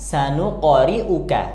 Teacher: qof sukunnya dipantulkan karena ini huruf Qalqalah